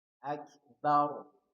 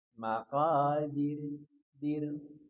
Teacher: Coba lagi. Jadi ingat ketika sebelumnya fathah atau dhammah tebal. Akbar tebal. Sur, takatsur, tebal. Kalau sebelumnya kasroh, tipis. Maqadir, dir, tipiskan, tartik.